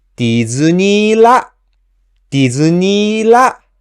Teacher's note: So for example, when I say ディズニーランド, the accent is on la. So from the first mora D to the accented mora la, I pronounce them in rising tone